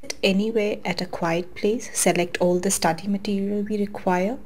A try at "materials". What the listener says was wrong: Materials, again, the T sound, sounds like a D. You need to improve your pronunciation.